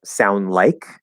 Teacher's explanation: It's a little harder to do, and we'll just say like sound, push out the D, or maybe drop it in a connection, like sound like the N and the L will kind of connect and the D will just disappear